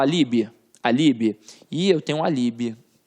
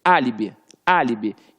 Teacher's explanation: E quando você fala que você tem um álibi, você tem ali, ó, a antepenúltima sílaba forte.